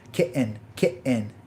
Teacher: the words kitten and mitten has actually glottal stops in it